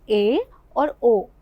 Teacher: अर्ध समृद्ध स्वर क्या होते हैं, जिसमें समृद्ध स्वर की अपेक्षा जो है वो मुख थोड़ा ज़्यादा खुलता है